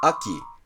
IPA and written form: ʌki (Aki)